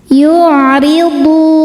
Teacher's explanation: Huruf ra dibaca tarqiq karena harokatnya di bawah kasrah, maka dibacanya tipis. Yu'ridu. Hukumnya mad tabi'i zahiri sebab ada waw sukun sebelumnya berharokat dhammah.